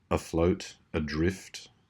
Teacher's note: in a lot of those words beginning with a short a, afloat, adrift, you get that short sound, a schwa.